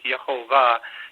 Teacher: yehovah with the emphasis in the last syllable the Hebrew is usually emphasizing the last syllable so it's yahovah